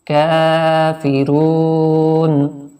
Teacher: واو ساکن سے پہلے پیش ہے، رو کو تھوڑا سا کھینچ کے پڑھیں گے اور وقت کی وجہ سے یہ نون ساکن ہو جائے گا۔